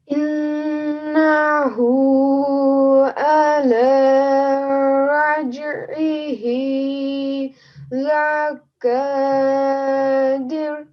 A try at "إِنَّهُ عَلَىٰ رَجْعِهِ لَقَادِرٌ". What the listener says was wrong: Your pronunciation, your timing was perfect. Just one thing over here, this qaf is a thick and heavy sounding letter, okay? So we're going to say laqadir.